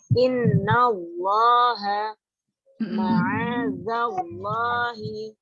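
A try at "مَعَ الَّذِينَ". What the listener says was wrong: Ma'adallah. Kurang ditebalkan sedikit lagi. Ma'adallahi. Lebih dibulatkan lagi.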